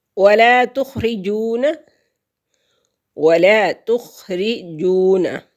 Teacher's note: واو ساکن سے پہلے لفظ پر پیش ہے تو واو مدہ ہے، ایک حرکت کے برابر اس کو لمبا کریں گے۔